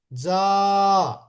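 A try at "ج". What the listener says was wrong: জিমটা আরো শক্ত হবে, যা। ওই ঢাকাইয়ে ঢাকাইয়ে মানুষ যারা, তারা একটু বলে "এই জাগা যা, যা যা যা", একটু জিমটা একটু শক্ত হবে, বুঝছেন?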